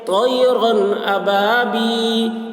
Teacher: یا ساکن سے پہلے زیر ہے، یا مدہ ہوا، اس لیے یا مدہ کو ایک الف کے برابر کھینچ کر پڑھیں گے